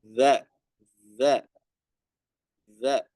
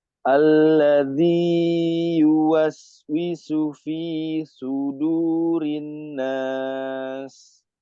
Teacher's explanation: ujung lidah bertemu dengan gigi seri depan. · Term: huruf za